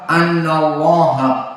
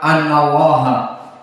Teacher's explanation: Mufakhamah karena sebelumnya fathah. Maka jika sebelum fathah annallaha bukan muraqqaqah.